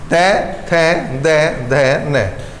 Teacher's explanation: इन पांचों अक्षरों में जब भी आप कोई अक्षर बोल रहे होगे तो तुम्हारे जो दांत बिल्कुल स्पर्श कर रहे होंगे किसे? जीभ को।